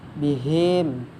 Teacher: Lemburkan mim sukun ke dalam mim kedua disertai dengung 2 harakat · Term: idgham mim